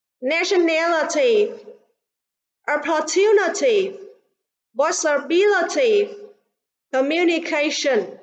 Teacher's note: communication, trọng âm rơi vào âm tiết thứ 4, còn lại thì trọng âm rơi vào âm tiết thứ 3.